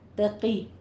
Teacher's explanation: قوف کو پر پڑھیں گے کسرہ کے ساتھ